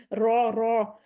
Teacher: रॉ आपकी पुर होनी चाहिए, रो दो दफा रोल हो जाए आवाज